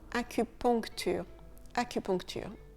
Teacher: Le UN, il se prononce on.